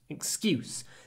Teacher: So the vowel is much shorter before the s.